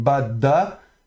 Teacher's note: le dalet qu'on prononce occlusif qu'il soit avec dages ou pas donc da. Et puis on termine par le par un dallet de finale.